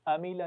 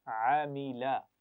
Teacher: आइन की आवाज़ को ठीक तरीके से अदा करना है, हमजा के मखरज से नहीं पढ़ना, अमीला नहीं पढ़ना, ठीक है, दरमियान से अदा कीजिए।